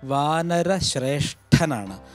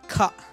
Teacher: ക എന്ന ശബ്ദത്തിൻ്റെ തൊട്ടടുത്ത ഖരം കിട്ടണമെങ്കിൽ ക അധികം ഹ് അധികം അ, ഹകാരം ചേർക്കണം എന്നാണ്. അപ്പോൾ ക എന്നതിനോട് ഹകാരം ചേർത്താൽ ഖ.